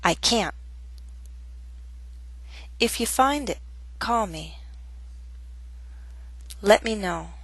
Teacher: we can also use a glottal stop before a final T